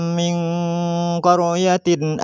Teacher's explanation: nun mati bertemu qaf memasukkan suara nun mati pada qaf disertai gunnah